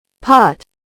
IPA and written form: pɑːt (Pot)